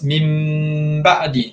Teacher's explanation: tutup terus bibir kita, rapatkan terus mim ba'di dengan dengung sekali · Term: ikhlab